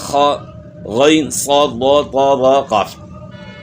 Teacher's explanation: ان میں جو ہے زبان تالو کی طرف اٹھ جاتی ہے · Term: حروف مستعلیہ